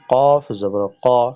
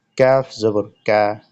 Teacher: এই দুইটির মাঝে সিফাত বা বৈশিষ্ট্যগত পার্থক্য আছে। কফ উচ্চারণ করার সময় জিহ্বার গোড়া উপরের দিকে ধরে চাপ দিয়ে শক্ত করে উচ্চারিত করতে হবে, আর কাফ উচ্চারিত করার সময় তার থেকে জিহ্বার গোড়া থেকে একটু আগে সামনে বাড়িয়ে উপরের তালুর সঙ্গে লাগিয়ে হালকা করে উচ্চারণ করতে হবে